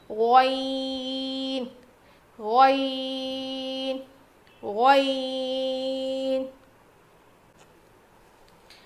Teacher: حلق کے اوپر والے حصے سے ادا ہوتا ہے. جیسے خوا ادا کیا تھا نا, اس میں کھردری آواز آئے گی, اس میں نہیں آئے گی, بالکل صاف آواز آئے گی.